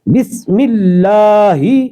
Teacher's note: بسم اللہ کے سین کو سٹی کے مثال اس کی سٹی کے برابر اس کی آواز نکالنی ہے، جیسے صفیریہ حروف میں سے ہے، تو اس کو بس پڑھا جائے گا، بالکل بسم اللہ، ملہ کے لام کو ہم نے باریک کرنا ہے اور لام کو کھینچنا ایک الف کے برابر۔